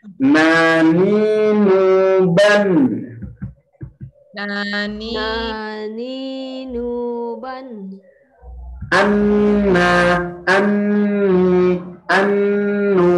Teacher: Ujung lidah pada posisi Menempel gusi atas di atas sedikit dari makhraj lam. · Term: huruf nun